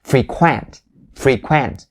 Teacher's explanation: the first syllable it has the e sound the long e sound but the second one is going to be the primary stress